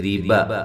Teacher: را کو باریک، با کو ہلانا نہیں ہے، لمبا بھی نہیں کرنا۔